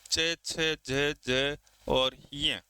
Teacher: स्पर्श के साथसाथ जो स्वास है वह स्पर्श तो करेगी ही उसके साथ-साथ कुछ घर्षण के साथ निकलती है। कुछ मुंह विवर में घर्षण करती है। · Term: स्पर्श संघर्षी